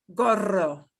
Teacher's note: But you keep it short. You know, we have a tendency in English to drag out the long O sound. Okay, but keep it short.